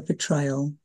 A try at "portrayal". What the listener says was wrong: Portrayal. You did say betrayal.